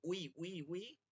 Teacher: বি বলা যাবে না কিন্তু উই বলতে হবে উই উই উই ঠোট গোল করে